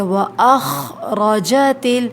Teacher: خا کے اندر نا خرخراہٹ پائی جاتی ہے